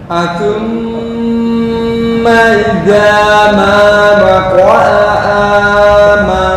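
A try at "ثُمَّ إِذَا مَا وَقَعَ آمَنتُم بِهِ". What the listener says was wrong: Kepanjangan. Ini hanya 2 harokat. Idza, bukan ida. Makhraj ya, kembali ke makhraj dulu. Ujung lidah dengan ujung gigi. Bukan da. Za.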